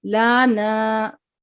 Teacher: यानी लाम की हरकत को लंबा कर दिया, यानी लाम पे भी अलिफ मद्दा कर दिया। तो इस तरीके से नहीं पढ़ना चाहिए, इस तरीके से हमें पढ़ने से बचना है।